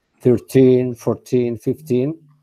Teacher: the stress is in the last syllable